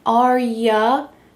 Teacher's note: We already talked about how sometimes you becomes ya, and this is extremely common as we're speaking quickly